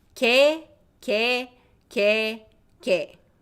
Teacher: when these ye sounds, these two ye sounds come after another consonant, they are pronounced same as just e sound too. So ke, ke, ke, ke.